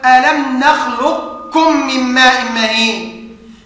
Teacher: فوجب ادغام القاف في الكاف